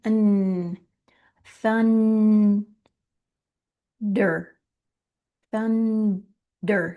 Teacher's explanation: my tongue is up at the roof of my mouth already on the N